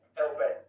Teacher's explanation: you're dropping the H right out of there. He was saying hellbent. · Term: drop the H